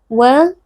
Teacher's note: sempurnakan makhrajnya dari syafatain dengan cara memajukan bibir